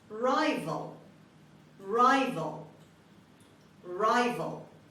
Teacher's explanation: were trying to work and word number two rival rival rival the stress is on the first syllable at the beginning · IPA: /ˈraɪvəl/